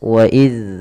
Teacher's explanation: Zal tempat keluarnya adalah dari ujung lidah kita menempel dengan gigi seri atas. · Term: huruf zal